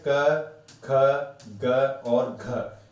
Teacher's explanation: क वर्ग जो है कहां से बोला जाता है बेटा कंठ से